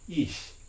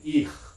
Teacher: In fact, this is the first person, I think, nominative singular pronoun, means I, and like I like first person, and it's pronounced with a palatal fricative, ich, right? Not with a velar one · if you put that voiceless velar fricative from German after an E vowel, you get a different kind of fricative, which is a palatal one